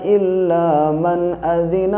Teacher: الا من پہ گنہ اس لیے نہیں کریں گے کیونکہ حروف حلقی کا یہاں پہ حمزہ آ رہا ہے